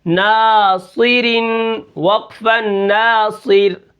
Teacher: را کو ہم باریک کریں گے، را ساکن ہو اس سے پہلے زیر ہو